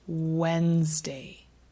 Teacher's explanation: you'll notice we typically do not pronounce the d